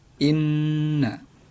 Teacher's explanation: Jadi huruf nun yang ada di sini bertasydid dan dibaca dengung. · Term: gunnah